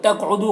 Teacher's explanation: قاف کو پر پڑھیں گے اور قاف میں قلقلہ کریں گے۔ دو میں واو مدہ ہے، اسے ایک الف کے برابر کھینچیں گے۔